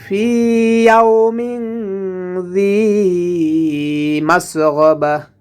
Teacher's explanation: ইয়াউমিন এখানেও গুন্না হবে, কারণ তানবিনের পরে জাল এসেছে, জালটা ইখফার হরফ, এর জন্য এখানেও গুন্না করতে হবে। জালটা জিব্বার আগা থেকে নরমভাবে উচ্চারণ করতে হবে।